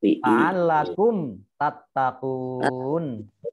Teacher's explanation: Alakum tattaqun, mim sukun bertemu dengan ta dibaca jelas idhar safawi, tattaqun mat arif lis sukun, baca panjang 2, 4, atau 6 harokat.